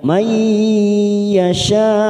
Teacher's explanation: Yu'tihi may, yu'ti kasrah bertemu ya sukun 2 harokat. Himai nun sukun bertemu ya idgham bi gunnah, kita tekan 3 ketuk